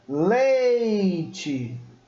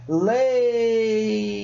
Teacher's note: Então o E, ele é pronunciado com muito mais força, né? Ele é pronunciado com bem vigor. Então a gente está vendo aí que a vogal vem primeiro e depois o I como semivogal. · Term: decrescente